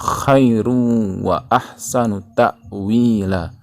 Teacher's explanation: Idgham bi gunnah ya, idgham dengan cara masukkan dengan dan didengungkan bi gunnah